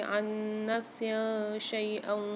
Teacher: عن نفس شیئا، اچھا سین کے نیچے جو زیر آ رہے ہیں ان کو ساتھ آ رہی ہے شین، یہاں پر اخفا مال غنہ والا قاعدہ ہوگا، اخفا کے 15 حروف میں سے شین آ رہی ہے، غنہ کر کے پڑھیں گے